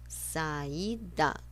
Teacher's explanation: São 2 vogais pronunciadas separadamente, um hiato.